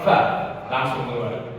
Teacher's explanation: Kemudian ditinjau dari mudah atau sulit huruf itu dikeluarkan menurut orang Arab. Fa ini adalah huruf idlaq, huruf yang cepat keluar, fa langsung keluar.